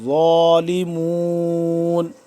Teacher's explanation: زبان کی نوک کو سامنے کے اوپر والے جو دانت ہیں ان کے پچھلی سائڈ پہ جب لگائیں گے تو صحیح طریقے سے ظا ادا ہوگا